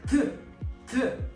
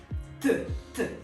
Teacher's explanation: in Russian, the sound t is not alveolar, so you need to reach your teeth, like t. Yeah, it's harder.